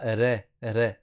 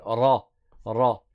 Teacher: on a un ra qui est emphatique. Ça veut dire qu'il est grave. On ne dit pas ré, ré.